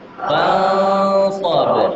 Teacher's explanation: Jadi ikhfa ini menutup, ya, suara nunnya hilang. Fansa ditambah sa, kemudian ba di akhir itu qalqalah.